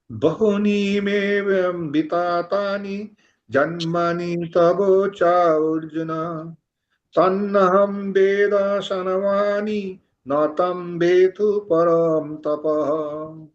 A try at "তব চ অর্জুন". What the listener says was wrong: এখানে এই যে চা অর্জুন কথাটা চা অর্জুন নয়, চ অর্জুন অথবা চার্জুন, চ অর্জুন অথবা চার্জুন, ঠিক আছে? আকারটা যদি অ করিয়ে দিন তাহলে চ অর্জুন হবে অথবা চার্জুন হবে, কিন্তু চা অর্জুন বললে আবার